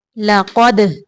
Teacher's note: دال کو کلکلا کرنا ہے، قاف کو موٹا پڑھیں گے